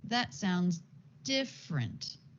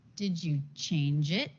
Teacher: For the statement, that sounds different. The intonation goes down. Then a yes/no question. Did you change it? Change it, and the intonation goes up. That's often what happens with a yes/no question.